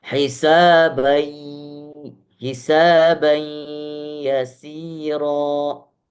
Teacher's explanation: Tanwin bertemu dengan huruf ya, maka cara membacanya adalah keluar suara daripada mulut dan juga keluar suara daripada hidung. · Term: idgham bi gunnah